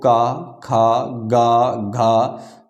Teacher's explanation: पहला दूसरा इन दोनों शब्दों के बोलने के बाद में जब तीसरा चौथा शब्द बोलोगे तो उन शब्दों में कंपन ज्यादा महसूस होगा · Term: सघोष व्यंजन